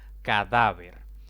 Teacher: esta palabra tiene tres sílabas contando de izquierda a derecha la mayor intensidad de voz cae en la penúltima sílaba y como no termina en n o s o vocal debo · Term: palabras graves